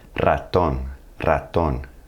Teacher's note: When the R is at the beginning of the word, you're going to have to hit that trill.